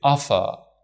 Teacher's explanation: In British and Australian accent, they don't pronounce the R consonant sound when it follows a vowel sound. For example, in American they say offer, in British they say offer.